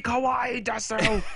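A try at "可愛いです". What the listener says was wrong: Technically, you don't even say su, it's just kawaii des is how it's pronounced in Japanese. Don't pronounce the u.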